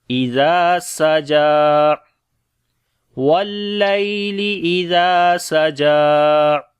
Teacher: ہمس اور صفت صفیر ہوگی اور جیم کے اوپر جو ہے وہ کھڑی زبر ہے اس لیے اس کو لمبا کریں گے